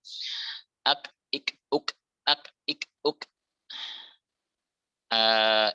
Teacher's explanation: Jadi yang ditunaikan adalah sifat syiddahnya terlebih dahulu, lalu baru sifat hams. Ini pada kaf dengan pada ta. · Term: kaf sukun